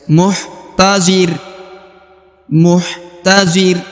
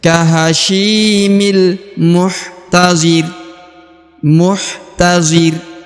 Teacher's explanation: Huruf ro yang di ujung disukunkan atau dimatikan karena dia berada di ujung ayat.